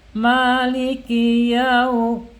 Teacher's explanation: Dibacanya halus, tidak boleh dihentak karena sifatnya dia lin, halus ya, miring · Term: madlin